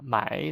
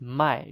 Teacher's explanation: 买 third tone is to buy, but fourth tone strong and short. 卖 is to sell.